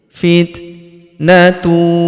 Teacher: huruf ta berharakat sukun. Kita berikan hembusan tipis